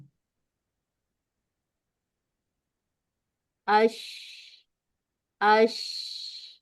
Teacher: ٹھیک ہے، درمیانی حصے سے ہی ادا ہونا ہے اس نے۔ شین کے لیے وسط اللسان حنک الاعلی کے قریب ہو جاتی ہے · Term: شاورنگ ساؤنڈ